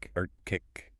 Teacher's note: Arctic retains both C sounds.